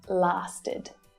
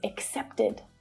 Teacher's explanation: this is an unstressed vowel sound and it creates an extra syllable which is always unstressed so the sound is short and it's low in pitch